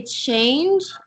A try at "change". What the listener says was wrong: you split it into like two syllables. So you said we're like change.